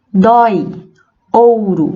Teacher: a vogal ela é pronunciada com mais força né de forma mais destacada do que a semivogal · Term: ditongos decrescentes